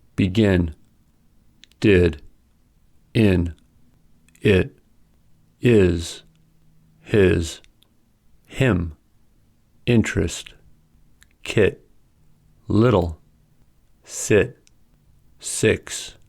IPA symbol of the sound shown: ɪ